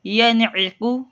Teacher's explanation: نون ساکن کے بعد عین آ گیا، یہاں پہ گنہ نہیں کریں گے۔ ینعق نون اظہار کا قاعدہ لگ رہا ہے۔